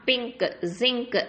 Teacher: பிங்க், ஜிங்க் அப்படின்னு சொல்லும் போது அந்த என் சவுண்டு வெளியில் லைட்டாக தான் தெரியும் உங்களுக்கு